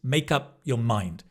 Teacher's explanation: often, if you like, you can link makeup